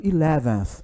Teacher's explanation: Esse aí é o som do TH, é o TH que não é pronunciado, é o unvoiced.